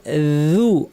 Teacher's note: জিহ্বা নিচে থাকবে, আওয়াজকে উপরে ঠেলবো না, জিহ্বা নিচের দিকে বসে থাকবে। জু জিহ্বা যদি উপরের দিকে উঠিয়ে দিই জু ভারী হয়ে যাবে, সেটা ভুল হবে। · জিহ্বার শীর্ষ থেকে একটু ভিতরের অংশ তরাফুল লিসান উপর পাটির দাঁতের শীর্ষে লাগিয়ে নরম করে এবং পাতলা করে বলবো জু। অনেকেই এখানে ভুল করেন, উ বলে ফেলেন। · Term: জাল